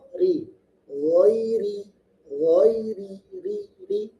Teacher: ro yang tarkik tipis. Caranya cukup menurunkan lidahnya.